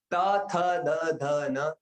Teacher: त थ द ध न बोलने के लिए जीभ कहां पर लगती है? दांत पर लगती है। दांत आपके गिर गए तो आप त नहीं बोल पाओगे। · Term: दंत्य